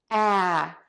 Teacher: Open mouth in a wide circle - very wide open no rounding. Tip of the tongue is down, back of the tongue is pulled way high up. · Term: ah sound